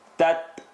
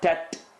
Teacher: The ta is going to pop. Tat, not tat. It doesn't tick, it pops.